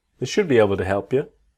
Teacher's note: remember the L in should is silent